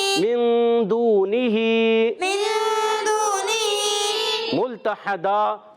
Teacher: دو زبر کی تنوین کو وقف میں الف سے بدل دیں گے، وقف بالابدال.